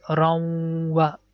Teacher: this run sound is going to merge with Waw. It becomes Raw, and the second part is Wa.